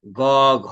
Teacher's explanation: ঘোষের সময় কাঁপে হচ্ছে স্বরতন্ত্রী, অর্থাৎ কণ্ঠস্বর।